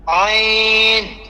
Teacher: আইনের মধ্যে না তিন আলি পরিমাণ টান আছে